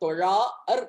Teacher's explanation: இசையில நீட்டிக்கலாம் நீங்க தொழார் அப்படின்னு நீட்டிக்கலாம் இல்லையா எனவே அந்த ஒழுங்குமுறை அடிப்படையில தொழார் என்று அளபடை எடுத்து இசை நீட்சி செய்தார்கள்